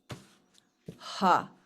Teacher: the aspirate ha comes from the back of the throat